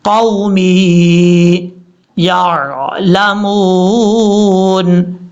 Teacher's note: آگے میم کے بعد جو یا ہے یہ یا مد ہے، یہاں پر واو کو لمبا نہیں کریں گے، شارٹ کٹ پڑھیں گے، لیکن یا کو لمبا کریں گے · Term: واو لین